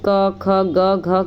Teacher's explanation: इन व्यंजनों के उच्चारण में एक उच्चारण अंग दूसरे उच्चारण अंग को स्पर्श करते हैं, जैसे कि क ख ग घ के उच्चारण में जिह्वा पश्च का कोमल तालु से स्पर्श कराया जाता है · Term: स्पर्श व्यंजन